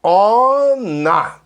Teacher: Vai juntar o N com A, né?